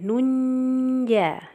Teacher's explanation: Kenapa? Karena ada tanwin bertemu huruf jim. Nah, cara membacanya disamarkan kemudian didengungkan. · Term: Ikhfa hakiki